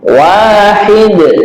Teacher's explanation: Jangan lupa ketika wakaf di sini dal kita tunaikan qalqalahnya dal ya.